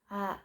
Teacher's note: fathah dengan berbunyi a yang kadang terdengar seperti O tebal tapi sebenarnya tetap A. Nah, cara melafalkannya itu membukah mulut atau rahang secukupnya.